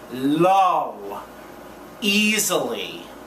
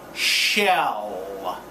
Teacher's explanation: to make it at the end of a word or in the middle you touch the tongue to the alve Ridge and then take it off the Alva Ridge to finish the sound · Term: L Sound